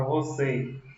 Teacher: a palavra você a sílaba tônica é a última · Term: oxítona